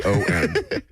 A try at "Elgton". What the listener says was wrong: The G is silent. It's just Elton. It's just Elton. The G is silent.